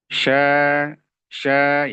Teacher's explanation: Kalau sya itu agak direnggangin sedikit artinya tidak nempel banget.